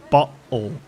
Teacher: but there's no T it's botle it is yeah it is it's a glottal stop it's not even a t